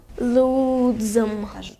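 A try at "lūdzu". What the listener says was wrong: Не, лудзу. Там нету буквы М. Лудзу.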